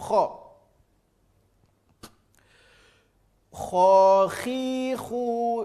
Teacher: hurufnya keluar dari ujung tenggorokan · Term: huruf KHO